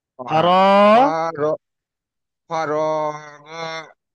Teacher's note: হুম, আলিফের ডান দিকে জাবার আছে, একে আলিফ মাদ্দা বলে, একে একালি পরিমাণ, আলিফ মাদ্দাকে একালি পরিমাণ টান দিয়ে পড়তে হয়